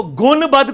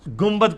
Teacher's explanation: نون ساکن کے بعد جب کبھی بھی با آ جائے تو وہ میم سے بدل جاتا ہے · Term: اقلاب